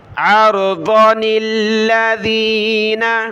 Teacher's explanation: آپ نے اس چھوٹے نون کو لام کے ساتھ ملانا ہوگا، اور نون پر زیر ہے تو زیر کے ساتھ پڑھنا ہوگا۔ عرضن الذین، عرض ضاد زبر ضا نون کو لام کے ساتھ ملایا للذین.